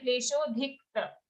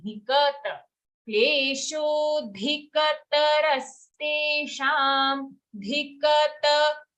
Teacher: Here a very common mistake is we say kleshodhikta. It's not dhikta, it is a full ka sound.